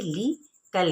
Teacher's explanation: لام کی جو زیر ہے اس کو ہم باریک پڑھیں گے